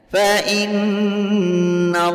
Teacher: Cara membacanya bunyi in dimasukkan ke na sambil ditahan dan dipanjangkan serta mendengung selama 2 harokat. Fa in yang dipanjangkan bukan i-nya tapi an-nya yang dipanjangkan. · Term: gunnah musyaddadah